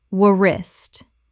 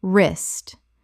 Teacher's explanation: The W is completely silent. One syllable only.